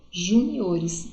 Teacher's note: a sílaba mais forte não é mais no Ju, é no O